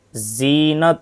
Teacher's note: फर्क जाल की आवाज बारीक और नरम होती है जैसे जकारा जा की आवाज सखत बारीक और सीटी वाली होती है